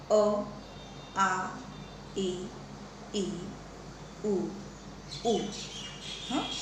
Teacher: આ જે તમે ઉચ્ચારો છો તો એમાં કંઠનાળ જે છે, નાદતંત્રીઓ એનું મહત્ત્વનું કામ છે અને બહાર હવા સીધી ફેંકાય છે. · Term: સ્વરો